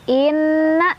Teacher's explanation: Inna ada gunnah musyaddadah karena ada nun bertasydid, dibacanya didengungkan.